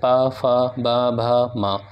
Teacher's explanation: हम ओष्ठ का इस्तेमाल करेंगे, ओंठ का